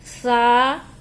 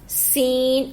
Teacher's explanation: جیسے ثا نرمی سے اور سین سختی سے ادا کی جائے گی